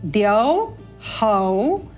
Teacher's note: प्रकार से यहां पर हाईलाइट कर देते हैं इसको द हौ औ के स्वर के बाद उ की अल्प ध्वनि